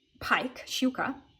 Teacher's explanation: the vowels after sh are going to get a small Y sound in front of them